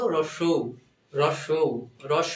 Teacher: এজন্য এটা অর্ধ সংবৃত আর যখন বলব রস রস রস মানে মুখটা একদম ছোট এজন্য এটা সংবৃত